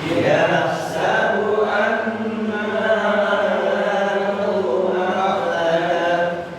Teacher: Maknya yang panjang, bukan naknya yang panjang.